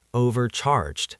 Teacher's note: And the e d at the end sounds like a d.